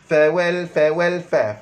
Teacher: huruf fa gigi atas sentuh bibir bawah